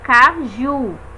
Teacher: Vejam a diferença da força empregada quando eu pronuncio K e quando eu pronuncio ju. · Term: sílaba mais forte